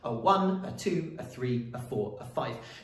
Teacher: unstressed syllable followed by a stressed syllable a one a two a three a four a five now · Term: iambic